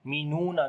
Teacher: Hamza is coming with the sukun sign, so we make jerk sound here, as we make a shiddat quality, like the discontinue our sound.